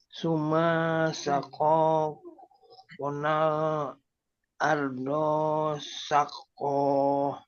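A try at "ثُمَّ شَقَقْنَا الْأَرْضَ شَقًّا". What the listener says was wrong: Mak sama Ardo jangan panjang. Summa syaqaqa.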